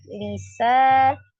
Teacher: Ada alif sebelumnya fathah di huruf sin sa dibaca dua harakat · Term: mad alif